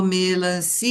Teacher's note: o que a gente estende é o som do i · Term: sílaba tônica